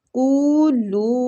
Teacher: یہ مد جائز منفصل ہو رہی ہے، تو اس کو ہم نے 3 حرکات کھینچنا ہے